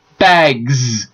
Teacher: So G makes the throat vibrate. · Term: progressive assimilation